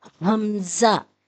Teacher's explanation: حمزہ حلق کے آخری حصے سے ادا ہوگا